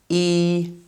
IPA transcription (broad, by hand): i: